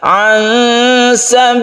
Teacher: Kalau huruf di Indonesia itu n, bukan, tapi disamarkan. Cara menyamarkan yaitu ketika kita membaca nun, kita bersiap membaca sin. Sambil didengungkan ya. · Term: ikhfa hakiki